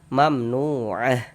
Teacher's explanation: Ini kita berwakaf nih, berhenti. Berhenti kita berwakaf kita tepat di huruf ta marbutah maka dia menjadi huruf H. Maka kita baca mamnuah. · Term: ta marbuthah